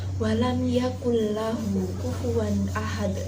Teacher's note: Kata walam yakullahu tidak boleh dibaca mendengung. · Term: idgham bila gunah